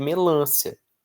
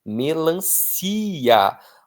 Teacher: A tônica é o si. É uma palavra paroxítona terminada em A.